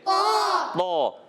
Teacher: कुरान पाक का सबसे मोटा पुर हर्फ है त